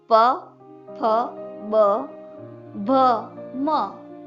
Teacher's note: प वर्ग ले, प, फ, ब, भ, म, जो ओष्ठ व्यंजन कहलाते हैं। जो हमारे होठ है एक दूसरे को स्पर्श करते हैं, इसलिए वो ओष्ठ व्यंजन कहलाते हैं।